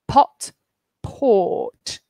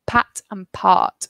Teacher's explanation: the R changes the vowel so the reason we have R here is because it makes the vowel longer